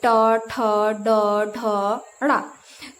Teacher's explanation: तो आप यह भी आप ध्यान दिए होंगे, जब आप इसका उच्चारण कर रहे हैं या इसको बोल रहे हैं, तो जब आप इसको बोल रहे हैं तो क्या हो रहा है कि आपकी जो जीभ है वो थोड़ी सी उल्टी हो जा रही है, यानी टेढ़ा हो जा रहा है और वह ऊपर वाले भाग को छू रहा है। यानी कि इसका जो उच्चारण स्थान है, यानी कि बोलने का जो स्थान है, वह है मूर्धन्य।